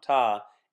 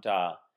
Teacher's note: ita first dropped its initial vowel to become ta, and later picked up voicing to become da. It is known that sometimes voicing will occur in words that are very common because voicing is easier to pronounce.